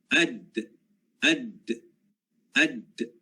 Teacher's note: Dan makhraj yang kelima huruf dal. Ya, huruf dal adalah hujung lidah, ya, hujung lidah menempel pada gusi depan atas.